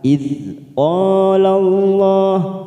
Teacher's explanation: huruf dal sukun bukan qalqalah, jangan sampai memantul. Kita tahan.